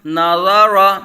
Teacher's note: نون باریک اور ضا کو پر پڑھا جائے گا، ضا حروف مستعلیہ میں سے ہے